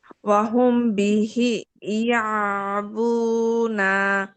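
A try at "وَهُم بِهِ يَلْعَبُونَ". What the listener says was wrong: ইয়াল এখানে লাম না আপু ইয়ালাবুনা হুমে তো টানা গুন্না আছে আপু ওয়াহুম বিহি ইয়ালাবুনা ওয়াহুম বিহি ইয়ালাবুনা হ্যাঁ আমি টেনে ফেলছি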